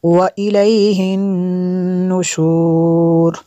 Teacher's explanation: نون مشدد ہے، یہاں پہ غنہ ہوگا